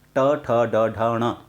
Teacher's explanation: ट जो है वो हमारे मूर्धा से बोले जाते हैं, इसलिए उनको मूर्धन्य वर्णमाला कहा जाता है।